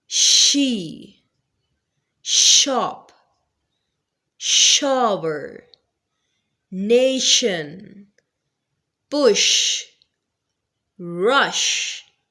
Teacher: Sh which is a voiceless sound. It means that there will be no vibration of the vocal gods. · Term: sh sound